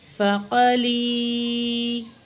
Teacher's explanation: یا ساکن ہے، ما قبل زیر ہے، یا مد ہے، تو یہاں بھی تقریباً 2 سیکنڈ ہم نے یا کو کھینچ کے پڑھنا ہے